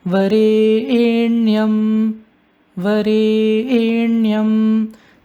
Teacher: it is chanted in a mid pitch followed by a high pitch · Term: double accent